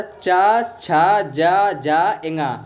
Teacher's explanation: च वर्ग के जो व्यंजन है वो तालव्य होते हैं। यानी कि तालु से बोले जाते हैं।